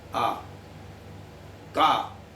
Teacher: अकार, ककार, हकार और विसर्ग, ये कंठ से पैदा हुए थे। आ, का बिना कंठ लगाए बोल नहीं पाओगे।